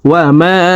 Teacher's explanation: ওয়াও জবর ওয়া, মিম আলিফ জবর মা, 3 আলিফ টান মধ্যে মুনফাসিল মদর হরফের উপরে চিকন চিহ্ন বামে হামজা মধ্যে মুনফাসিল 3 আলিফ টানিয়া পড়িতে হয়। তোমরা এই মিম হরফকে 3 আলিফ টানি পড়ব।